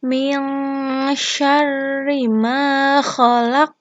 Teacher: Nun mati atau nun sukun bertemu dengan shin, hukum bacaannya ikhfa. Karena ada nun sukun atau nun mati bertemu dengan shin, membacanya samar-samar dengung.